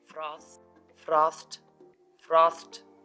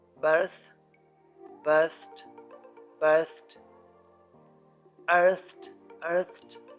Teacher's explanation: If a word ends with th sound like froth, frothed, frothed, then the ed ending is pronounced t